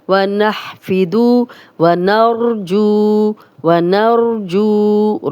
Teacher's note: را کو موٹا پڑھیں گے، را پہ زبر یا پیش و را موٹی پڑھی جاتی ہے، لیکن جب بھی را پہ جزم ہو تو پچھلا حرف دیکھتے ہیں اس پہ بھی زبر یا پیش و را موٹی پڑھیں گے.